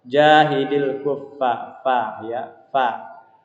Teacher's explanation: Jadi fa itu harus jelas mahmusnya, harus keluar angin yang berdesis ya. Fa itu huruf bibir. Cara pengucapannya dia bibir bawah bertemu dengan pangkal gigi seri atas ya.